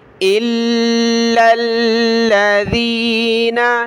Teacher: ذال پر زبان نکالیں گے